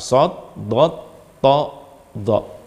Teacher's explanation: Lidah bagian depan ada yang naik, melekat atau mengatup ke langit-langit. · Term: itbaq